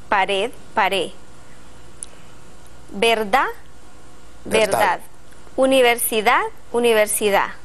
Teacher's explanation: la d al final de la palabra de forma relajada y debilitada pero ello puede hacer que llegue a perderse pared pared verdad